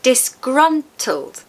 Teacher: Three syllables, stress, the second syllable.